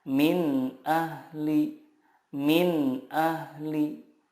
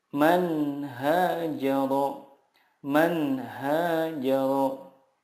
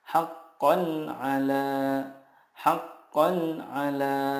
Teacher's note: Karena huruf-huruf idhar di sini makhrajnya adalah dari tenggorokan. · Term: idhar halki